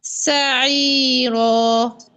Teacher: یہ سواد نہیں ہے، سین ہے، سین ہمیشہ باریک ہوتا ہے